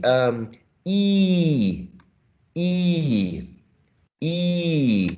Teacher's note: Okay, and the articulation is fixed. It doesn't glide. It doesn't go like oi, oi. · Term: monophthong